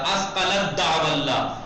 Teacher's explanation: دیکھیں آپ تے ہے، تے دال ہے نا، تے ساکن پہلے دال بعد میں، تو اب تے نہیں پڑھا جائے گا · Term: ادغام